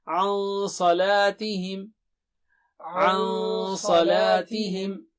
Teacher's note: صاد بہت موٹا اور اونچا ہے، لا، صلا، لا مد ہے وہاں پر، ذرا اس کو دہرائیے، عن صلاتہم، عن صلاتہم ساہون۔